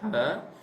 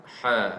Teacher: bila sebut ha ni dia lebih ke dalam tengkuk kita, ha, ataupun dilepas sikit pada rongga tengkuk kita. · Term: ha tajam